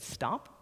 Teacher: if you say the word stop that t sound sounds closer to a D